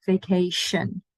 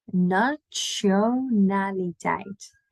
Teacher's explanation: Instead of a sh, we go more like a ch. So a little bit more of a T sound there because we do love to pronounce our T's.